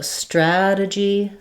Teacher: because it's not stressed here, so it becomes a reduced vowel rather than a clear vowel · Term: schwa